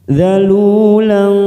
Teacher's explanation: kita samarkan bunyi fathah tanwin pada huruf lam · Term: ikhfa Hakiki